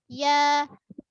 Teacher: ya tengah lidah kita angkat ke lelangit keras. Ya. Tapi ada ruang lah antara lidah dengan lelangit.